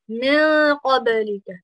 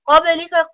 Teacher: You have ikhfa on the noon there. Qabalika, qaf is from huruf tafkhim. Make sure that you have it full mouth there. Ba is from huruf qalqala, so you need to make sure you bounce it.